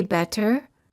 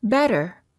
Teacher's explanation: when T is between two vowels the T sounds like a fast D sound